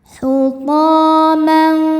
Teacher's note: Thukumnya mad thobi'i zohiri. Sebab ada alif yang sebelumnya berharakat fathah. Cara bacanya panjang dua harakat.